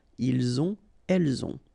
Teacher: final T not pronounced, and then we make the liaison